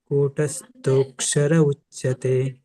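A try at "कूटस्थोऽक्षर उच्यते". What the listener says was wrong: ಅಲ್ಲಿ ನೀವು ಹೇಳ್ತೀರಲ್ಲಣ ಕೂ ಆಗಿಬಿಡುತ್ತೆ ಅದು ಅಲ್ಲ ಕಕೆ ಸಣ್ಣ ಉ ಸ್ವರ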